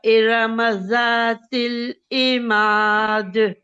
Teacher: और एन के नीचे कसरा है तो ये एन को 1 काउंट पढ़ेंगे, और मीम पे फतह है और अलिफ सगीरा है साथ में, तो ये 2 काउंट की मद बनेगी। और दाल साकिन हो जाएगा तो इस पे कलकला आ जाएगा